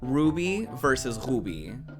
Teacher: The R is also difficult to me because I'm used to saying like it's hard to explain, like the full R. Like I don't roll my tongue back when I say R in Portuguese